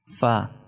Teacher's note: Fa is pronounced from the lips by the help of the upper 2 teeth, which is known as incisor